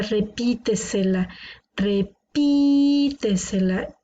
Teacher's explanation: tiene la sílaba tónica una antes de la antepenúltima